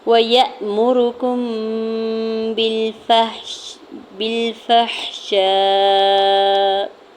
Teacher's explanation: کاف کی پیش کو میم ساکن کے ساتھ ملاتے ہوئے، آگے حرف با ہے، میم ساکن کے بعد حرف با ہے تو یہاں پہ اخفاء شفوی کا رول اپلائی ہو رہا ہے۔ میم ساکن کے بعد جب بھی حرف با آ جاتا ہے تو میم ساکن پہ غنہ کرتے ہیں